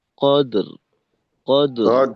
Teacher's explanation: القدر র থাকবে মোটা ভাবে কদর কদর। আর এখানে ইন গুন্না যেন টানের থেকে লম্বা দীর্ঘ সময় না নেয়, কারণ গুন্না ছোট, টান বেশি এখানে।